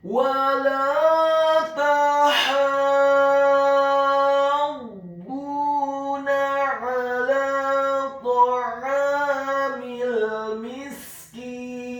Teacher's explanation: huruf ha-nya dibaca tipis, tarqiq nyaring dan halus, fathah 4 sampai 6 harokat. Ingat, bukan 2 harokat, tetapi 4 sampai 6 harokat. · Wala tahabbuna huruf wawunya dibaca fathah 1 harokat, huruf lam alifnya dibaca tipis, tarqiq fathah 2 harokat. Kemudian huruf ta-nya dibaca tipis, fathah 1 harokat, huruf ha-nya dibaca tipis, tarqiq nyaring dan halus, fathah 4 sampai 6 harokat.